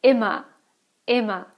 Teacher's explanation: you have the ER at the end of the word. It sounds more like an A than an actual R